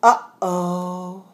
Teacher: And you may not notice or call it the glottal stop, but what is happening in your throat inside here is something called the glottis. And when the glottis constricts, it stops the air.